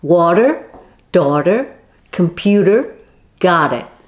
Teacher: american speakers make a voiced flap sound a bit like a fast d like this just lightly flap the tip of your tongue on · voiced flap sound a bit like a fast d like this just lightly flap the tip of your tongue on the alveolar ridge